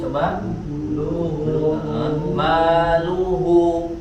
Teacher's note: lu dan hu dibaca dengan memonyongkan atau memanyunkan bibir